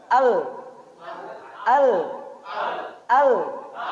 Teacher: ketika diucapkan Al tidak boleh ada pantulan